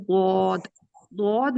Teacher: जब आपने इसको अदा करना है तो आपकी जबान पीछे से जो जड़ है जो कव्वे के पास, वो ऊपर की तरफ उठे, उसकी डायरेक्शन ऊपर की तरफ हो, तो फिर ये हरूफ अदा होते हैं। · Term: पुर पढ़े जाने वाले हरूफ